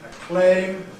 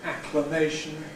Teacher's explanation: The [eɪ] in ‘acclaim’ [əˈkleɪm] switches to [ə] in ‘acclamation’ [ˌækləˈmeɪʃn̩]. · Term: initial